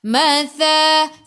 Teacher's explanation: itu hujung lidah keluar pada gigi depan